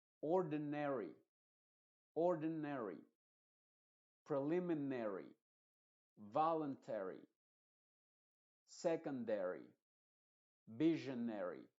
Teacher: cuando una palabra termina en Ari esa a por lo general se va a pronunciar como una e modificada